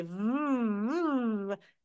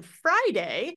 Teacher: if you say V and you put your hand on your throat you should feel a vibration there that means you're doing it right but if you say f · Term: voiced sound